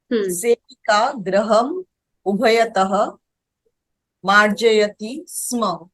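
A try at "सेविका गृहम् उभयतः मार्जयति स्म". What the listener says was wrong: Samyak.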